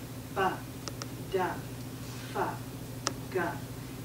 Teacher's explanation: they're adding what we call a schwa sound. They're adding an uh sound.